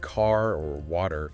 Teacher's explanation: American English tends to pronounce sounds, especially the R sound at the end of words, more clearly or strongly than many British accents do. Like car or water, you really hear the R.